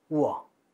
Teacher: W와 아가 결합하면 오나 우를 짧게, 그리고 아 모음을 연속해서 발음하면 와가 나오는 거죠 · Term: 반모음